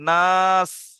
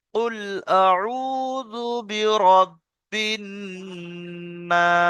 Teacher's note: নুনের উপর তাজদিদ আছে, তাই নুনকে একালি পরিমাণ গুণনা করা ওয়াজিব